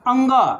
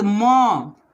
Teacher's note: ये सभी क्या है? नासिक के वर्ण हैं। इनका उच्चारण कहाँ से होता है? नाक से होता है। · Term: नासिक के व्यंजन